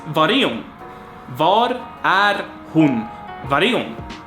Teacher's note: var and e instead of är, var är, and then we have hon, and the h gets dropped here as well